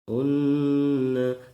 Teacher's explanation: Terdapat hukum idgham bi ghunah, yaitu tanwin bertemu dengan huruf nun, yaitu unna didengungkan dan ditahan 2 harokat.